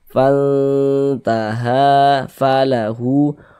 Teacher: Mad thobi'i panjangnya dua harakat.